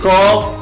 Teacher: Voiceless velar plosive, okay, like in call.